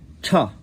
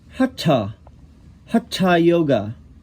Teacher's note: the tongue is at the roof of the mouth. It's called cerebrals, cerebrals. So, and you know that it's cerebral because it has this dot under the consonant, the dot.